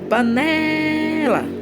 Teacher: Demoramos mais falando o né. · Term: sílaba tônica